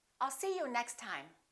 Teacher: we only pronounce one t